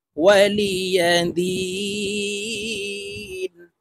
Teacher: দি এখানে তিন আলিফ টেনে নুনকে সাকিন করে ফেলবো, কারণ মদের হরফের বামের হরফে ওয়াকফ হইলে মধ্যে আরজি তিন আলিফ টেনিয়া পড়িতে হয়।